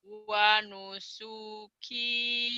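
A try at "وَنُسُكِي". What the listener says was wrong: sunya pendek. Wanusuki pendek ya.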